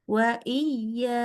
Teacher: Lembut ya akhirannya. Jadi jangan di yai, jangan ditekan, tapi lembut.